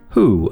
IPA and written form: huː (who)